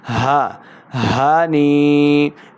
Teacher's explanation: وشربوا ہنیئا ہا زبر ہا کی آواز کو لمع نہیں کریں گے اور حلق کے نچلے والے حصے سے اس کو ادا کرنا ہے